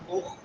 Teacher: خا حلق کے شروع والے حصے میں سے. اخفی لہم شروع والا حصہ جو منہ کے ساتھ ملا ہوا ہے.